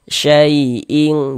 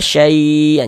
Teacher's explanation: huruf lin itu panjangnya itu di bawah daripada mad tabi'i